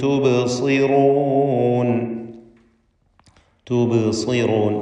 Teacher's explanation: ബാഇന്റെ സുക്കൂൻ ഖൽഖല സുഗ്റ നൽകി ശബ്ദം ഹറക്കത്ത് പോലെ ചലിപ്പിക്കുക.